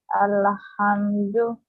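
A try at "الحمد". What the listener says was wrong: Don't do qalqala here, inshallah.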